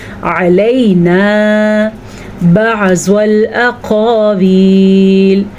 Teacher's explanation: علینا بعض الاقاویل، موٹا قاف ہے، موٹے قاف کے ساتھ الف ہے تو ہم یہاں پہ الف مدہ بھی کریں گے اور موٹے قاف کو بھی پڑھیں گے